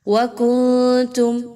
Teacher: نون ساکن کے بعد تا کا حرف آ گیا، اخفا کیا جائے گا، نون کی آواز کو ناک میں چھپائیے اور غنہ بھی کیجئے